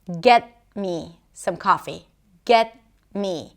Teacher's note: the T that appears before a consonant is a held T. That means that it's not being released. If we usually think of a T as a T sound, the tip of the tongue goes up and the air is released through the mouth.